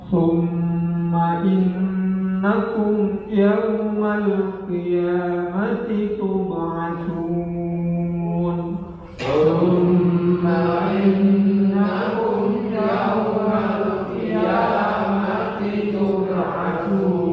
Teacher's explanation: Kita lihat ada mim mati ketemu dengan ya, sehingga harus dibaca jelas. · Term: ilhar syafawi